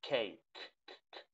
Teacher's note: Tiene una H entre medio porque tiene una aspiración